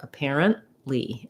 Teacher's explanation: We use a stopped T there, which means your N is going to be very short and you aren't really going to hear that T. You just stop the air, stop short, apparently, and then release right into your L of the li.